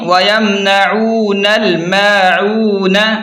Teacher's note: نون کو ڈائریکٹ لام کے ساتھ ملا کر پڑھیں گے، یہ بیچ والا الف نہیں پڑھیں گے · میم الف زبر ما، عین واو پیش عو، نون زبر ن، میم کو تھوڑا سا کھینچ کر پڑھیں کیونکہ مد اصلی ہے